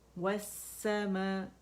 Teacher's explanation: ہم جب یہ پڑھتے ہیں تو یہ لام اور حمزہ جو وصل ہے, حمزۃ الوصل, یہ دیکھیں یہ ڈراپ ہو جاتا ہے سمجھو پڑھنے میں, اور لام سین کی شکل میں پڑھا جا رہا ہے کیونکہ اس میں مرج ہو گیا, اس کا ادغام ہو گیا